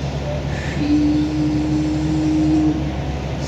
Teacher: شین میں صفت تفشی, منہ کے اندر آواز کا پھیلاؤ ہونا, آواز کا پھیلنا. بعض حضرات کہتے ہیں شین سخت ہو گیا, صفت تفشی کے خلاف ہو گیا.